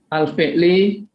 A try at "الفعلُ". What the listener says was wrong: Al-fi'lu. Bukan al-fi'li. Al-fi'lu.